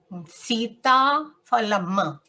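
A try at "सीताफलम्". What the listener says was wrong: Don't stress towards the end like phalam. Don't tell that way. Phalam.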